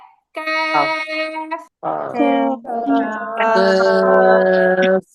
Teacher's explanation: জিহ্বার গোড়া থেকে একটু সামনে, ওই অংশটা উপরে তালুর সাথে লাগাতে হবে। তাহলে উচ্চারণ হবে ক্যাফ।